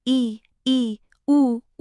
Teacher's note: जब इ उ बोलते हैं तो मुंह लगभग बंद सा रहता है। इसे कहते हैं संवृत।